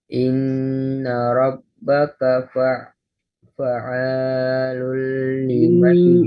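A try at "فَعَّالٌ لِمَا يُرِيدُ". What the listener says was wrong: Nah, perhatikan tasdid. Inna rabbaknya juga ditasdid. Inna rabbaka ainnya juga tasdid. ainnya 2 rakaat.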